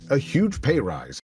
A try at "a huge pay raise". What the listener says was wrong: You said rise again. Raise. No, you said it wrong. raise.